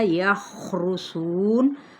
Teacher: وَإِنْهُمْ نون پہ اظہار ہوگا کیونکہ آگے ہار ہے، الا الف مدہ، یخرسون خا حروف مستعلیہ، صاد بھی حروف مستعلیہ موٹا ادا کرتے ہوئے ہم ان کو پڑھیں گے